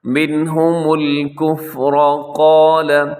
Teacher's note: کفر میں را موٹا ہے